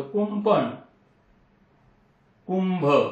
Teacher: कु वरती आपण अनुस्वार दिला तर कुंपण त्या ठिकाणी म चा उच्चार होतो